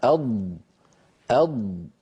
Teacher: هذا الحرف الذي يخرج من حافة اللسان اليمنى أو اليسرى أو منهما معا. هذا الحرف الذي وهو حرف الضاد، لما يقول أحدنا أض هكذا، فإن كل هذه المنطقة تنقفل، كلها تنقفل ولا يبقى مجال للصوت أن يمر.